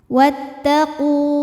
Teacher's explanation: Jika kita berhenti di qu, hukumnya adalah mad tabi'i zahiri, karena waw ini adalah waw mad, waw sukun. Waw sukun didahului dhammah, maka mad tabi'i panjang 2 harokat. Wattaqu. Namun dibaca panjangnya hanya saat berhenti saja.